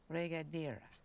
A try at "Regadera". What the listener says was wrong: Regadera. Have to roll your R's.